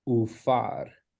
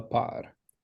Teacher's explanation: So instead of the plosive pe, it turns into a fricative fe. So as in par, we would say ufar, instead of the par.